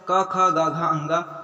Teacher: क, ख, ग, घ, अंगा ये है कंठ व्यंजन।